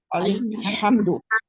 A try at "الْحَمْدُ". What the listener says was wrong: ہم دو نہیں ہوتا، الحمد۔